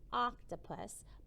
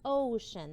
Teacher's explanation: it says ah like an octopus but it can say o in ocean that's the long sound